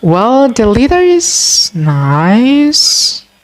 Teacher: the riseful intonation is used to indicate that he or she hesitates to fully express his or her thoughts